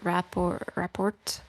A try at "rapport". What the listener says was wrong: It's report. You don't pronounce the T. Yeah, just report.